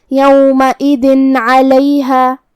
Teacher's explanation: کلمت علیہا میں حرف العین کو ہم حلق کے درمیان والی حصے سے ادا کریں گے · ہم یہاں تنوین ظاہر کریں گے اور اسے نون ساکن پڑھیں گے اور بغیر غنہ سے یہ حکم کو ادا کریں گے